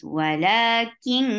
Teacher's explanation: We are hiding the sound of noon, going towards the makhraj of kaf, and keeping the sound in our nose. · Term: ikhfa